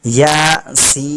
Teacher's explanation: या को जो है एक अलिफ बराबर खींचेंगे, जबकि सीन को मद्दा, यानी वहाँ पर मद लगा हुआ है इसलिए 3 अलिफ के बराबर 3 सेकंड तक खींचेंगे